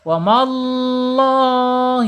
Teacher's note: lam jalalahnya dibaca tafkhim atau tebal. Ya, kenapa? Karena sebelum lam jalalah harokatnya fathah.